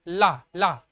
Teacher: जब हम ला बोलिए, आप लोग ला बोलिए साथ में, तो जब बोलते हैं तुम्हारी ला होती है, तो हमारी जो जीभ है ना ला, तो जीभ हमारी जो लपट के ऊपर जाती है, किसमें लगती है, ऊपर तलवे में लगती है ना, ला ला। ठीक है, तो क्या हो रहा है यहाँ पर, लुंठित हो रहा है ना।